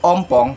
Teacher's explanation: vokal O, vokal belakang tengah bundar, bentuk bibir menjadi lonjong seperti corong dan diupayakan sebulat mungkin.